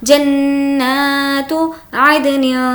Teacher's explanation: تنوین کے بعد تا ہے جو کہ حرف اقفا میں سے اس لیے اس کی آواز کو ناک میں چھپائیں گے